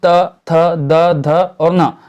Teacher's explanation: त वर्ग जो है उसके अंतर्गत आते हैं त, थ, द, ध और न, जो कि दंतव्य व्यंजन कहे जाते हैं।